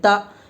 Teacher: زبر کی آواز اوپر کو اٹھتی ہے، آواز اور منہ کھلے ہوتے ہیں